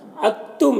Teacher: ساکن والا دال مشدد والے تا کے ساتھ مدغم ہو جائے گا، یعنی پھر دال کو نہیں پڑھیں گے، تا کو پڑھیں گے